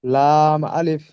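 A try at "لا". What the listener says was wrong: মাশাআল্লাহ, খুব সুন্দর হয়েছে।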